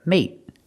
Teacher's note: We use a stop T at the end. Put the tongue up and stop the air.